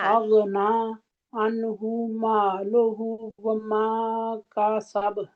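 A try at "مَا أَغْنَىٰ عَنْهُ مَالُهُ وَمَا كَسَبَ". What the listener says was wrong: अनहु नहीं है, आइन पढ़े, आ अन के मखरज में हमने रहना है, अन अन होल्ड करके रखे, अन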